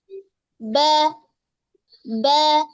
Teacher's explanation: Kalau ba dia merupakan huruf yang tipis karena dia hurufnya istifal dan juga infitah ya, tipis.